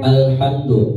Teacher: al ya lamnya sukun, tidak boleh ditawalud. Alham itu tidak boleh ya, karena bukan huruf qalqalah, jadi tidak dipantulkan.